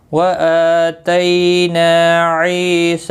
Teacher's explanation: نا الف مدہ ہے، عی یا مدہ ہے، دونوں کو ایک ایک الف کے برابر کھینچ کر پڑھیں گے